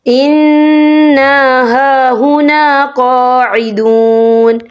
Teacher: یہ دیکھیں اِنَّا، یہاں نون مشدد ہے تو یہاں پر غنہ ہوگا